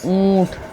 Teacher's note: अनुनासिक व्यंजन का उच्चारण करते समय वायु नाक और मुंह दोनों से बाहर निकलती है